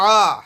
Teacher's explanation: عین زبر عا حلق سے ادا ہوگا